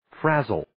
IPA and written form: 'fræzəl (Frazzle)